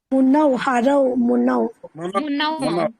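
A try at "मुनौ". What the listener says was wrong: Correct.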